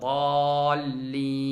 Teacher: Nun hərfi burundan çıxır axırda.